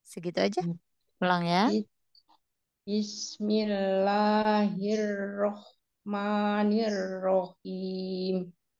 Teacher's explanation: lafzul jalalah jangan terlalu panjang dua harakat aja